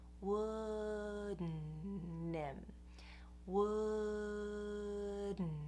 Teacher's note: I'm going up for the D, but I'm shifting very quickly into the N. Wouldn't. What it means to shift from the D into the N is that you go up for the D, and then right after that, you send the air through your nose.